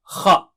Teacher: So from the upper part of the throat we have kha. Okay, kha. Remember, it is not thin.